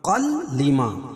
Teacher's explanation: تو یہاں ادغام کریں گے لیکن غنہ نہیں کریں گے، قاف کا لام میں ادغام ہوگا۔ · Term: ادغام بلا غنہ